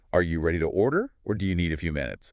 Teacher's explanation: Rising on order, the first option, falling on minutes, the second.